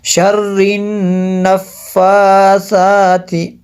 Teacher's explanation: یہاں پہ نون میں شدت بھی ہے، آگے دونوں کھڑا زبر جو ہیں ان کو ایک جتنا کھینچ کے پڑھنا ہے